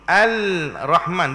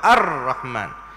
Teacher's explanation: Makna kata idgham, lam itu tak bunyi.